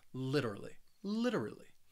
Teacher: I say this word more with that flap T sound so that t in the middle it's going to sound like a a soft D sound · in the middle, it's going to sound like a soft D sound. It is a subtle D sound